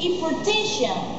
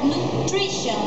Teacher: you put a stress on the second syllable from the end of the word